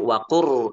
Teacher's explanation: Kita idghamkan lamnya ke ro. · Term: idgham mutaqibbain